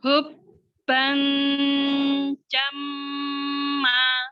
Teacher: Mim tasdid harus lebih lama gunahnya daripada ikhfa'nya.